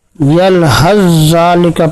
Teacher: اگر ہم یہاں سا کا زال میں ادغام کرتے ہیں تو سا درمیان سے غائب ہو جائے گی اور زال مشدد ہو جائے گا، یلحظ ذالک پڑھا جائے گا۔